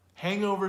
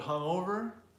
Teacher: The word hungover, hungover, will stress the second syllable, hungover. Hangover stresses the first, but hungover stresses the second.